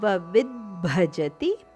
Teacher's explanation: ವಿಯ ನಂತರ ದ ದ ಉಚ್ಚಾರಣೆ ಅರ್ಧದಷ್ಟು ಅದಕ್ಕೆ ಮಹಾಪ್ರಾಣ ಭದ ಒತ್ತು ಸರ್ವವಿದ್ಭಜತಿ ಇಲ್ಲಿ ವಿಯ ಮೇಲೆ ಆಘಾತ ಇದೆ ಆದ್ದರಿಂದ ದಕ್ಕೆ ಸ್ವಲ್ಪ ಒತ್ತುಕೊಟ್ಟು ಹೇಳಬೇಕು